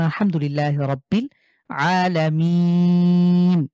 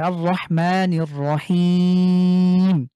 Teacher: এক মাদের হরকত বা মাদের হরফের পরে ওয়াকফ করলে জাস্ট আমরা এক আলিফের জায়গায় তিন আলিফ টেনে পড়বো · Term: তিন আলিফ মাদ